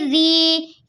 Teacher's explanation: والے حرف کے نیچے زیر ہے، یہاں یا مدہ بنے گا، رو زیر والی کو ہم باریک پڑھتے ہیں